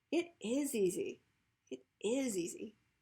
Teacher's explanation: So a lot of times we'll stress a be verb because it's a stative verb.